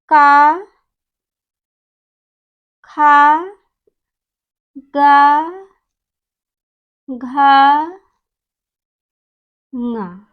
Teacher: वायु जो है गले से होकर के बाहर निकलती है, इसलिए इन वर्णों का उच्चारण स्थान कंठ है